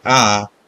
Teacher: in Spanish letter a is pronounced with open sound like ah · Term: open vowel sound